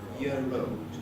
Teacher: The word year, I think I was pronouncing just with a schwa, year-old. Then there's a linking R before old.